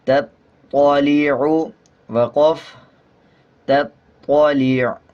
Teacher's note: جب وقف کریں گے تو عین کا پیش سائلنٹ ہو جائے گا اور عین کی آواز کو آدھا پڑھا جائے گا